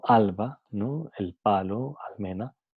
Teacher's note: cuando viene el sonido L seguido por bilabiales P, B, M, como alba, ¿no? El palo, almena, entonces la L, el sonido L es alveolar.